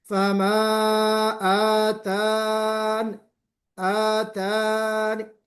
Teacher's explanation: یا ساکنہ کو آپ حذف کر دیں گے یعنی غائب کر دیں گے